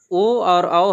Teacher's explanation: कंठ और ओष से निकलता है